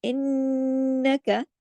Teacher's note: इन्नका नून पे तशदीद है तो नून पे गुन्ना होगा।